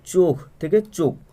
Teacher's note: মহাপ্রাণ যখন অল্প প্রাণ রূপে উচ্চারিত হবে সেটা হয়ে যাবে কিন্তু ক্ষীণায়ন